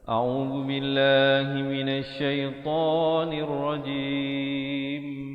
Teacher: Minasyaitonir rajim, dan ditutupkan rapat mulut menyempurnakan bunyi mimnya di akhir dengan kadar 2, 4 atau 6 harakat.